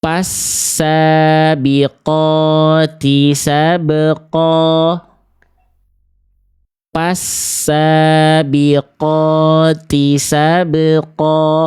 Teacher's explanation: Huruf fa-nya salah ya. Karena berubah jadi huruf P ya.